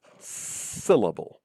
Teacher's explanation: there are three syllables in syllable, syllable, and one of them gets a stress. The first one, syllable. The other two syllables in syllable are not stressed, they're unstressed.